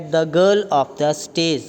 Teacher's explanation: ਦੋਨੋਂ ਹੀ ਨਾਊਨ word 'ਤੇ ਅਸੀਂ ਸਟ੍ਰੈਸ ਦਿੱਤਾ ਹੈ। ਦ ਨੂੰ ਅਸੀਂ ਛੱਡਤਾ because ਦਾ is article, ਆਫ ਨੂੰ ਅਸੀਂ ਸਟ੍ਰੈਸ ਨਹੀਂ ਦਿੱਤਾ because it is preposition and ਦਾ is article. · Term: ਸੈਂਟੈਂਸ ਸਟ੍ਰੈਸ